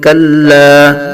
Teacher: کلا، یہاں یاد رکھنا ہے لام کو پر نہیں بلکہ باریک پڑھیں گے، کلا نہیں کلا کریں گے۔